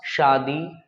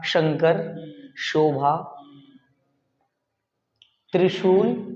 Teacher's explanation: आपका जो जुबान है वो तालू में टच होना चाहिए और घर्षण पैदा होना चाहिए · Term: तालब्य श